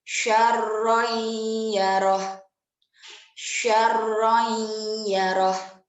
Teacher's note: Jadi ada dengung dan juga dileburkan. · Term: idgham bi gunna